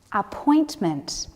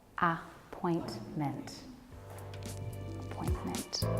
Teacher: The stress for appointment is on the second syllable.